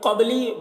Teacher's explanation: قبلی با میں قلقلہ ہوگا کیونکہ با حروف قلقلہ میں سے ہے اور اس پر جزم ہے تو قبلی قلقلہ کے ساتھ بولیں گے۔